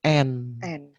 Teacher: Nun mati atau tanwin dibaca terang, dibaca jelas, zahir, tegas, berbunyi N. N. Dengan tidak memakai gunah dengung, tidak ditahan. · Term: idhar halki